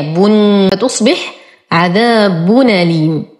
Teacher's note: فيقوم ورش بحذف الهمزة ونقلها إلى الساكن الصحيح قبلها، والساكن الصحيح هنا التنوين، فالتنوين أصله نون ساكنة، الضمة الثانية بن، فتصبح عذاب أليم. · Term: بالنقل